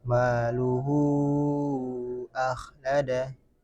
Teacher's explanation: Mad silah kubra dipanjangkan seukuran empat atau lima harakat dan disamakan seperti bad munfasil.